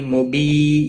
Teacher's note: یا مدہ ہے، ایک الف کے برابر کھینچ کر پڑھیں گے